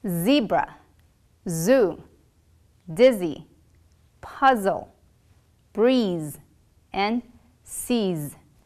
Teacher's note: tongue is going to be near the ridge but it's not going to touch there will be a continuous airflow and your vocal folds will vibrate